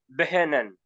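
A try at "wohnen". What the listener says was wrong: বে কেন হবে? বে ও, বো, বে ও হা। হুম, বে ও হা, বো, তারপর হচ্ছে কি এন এ এন না, নেন, বোনেন।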